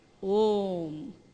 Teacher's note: So A and U are merged together and we say Om.